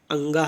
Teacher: हमारे पंचम वर्ण जो हैं लास्ट के वो बोले जाते हैं अंगा कंठ के द्वारा, या तालु के द्वारा, अणा मूर्धा के द्वारा, ना दंत के द्वारा, माँ ओष्ठ के द्वारा। लेकिन पंचम वर्ण जो है नासिक प्लस नासिक के द्वारा भी बोले जाते हैं, नासिका नाक के द्वारा भी।